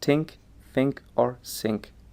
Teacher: absence of dental fricatives resulting in a pronunciation of think as think think or sink